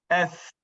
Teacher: S di hujung lidah saja yang mengena pada gusi sebelah dalam dan gigi kan.